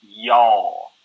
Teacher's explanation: the drawl is when you kind of drag out the syllables a little bit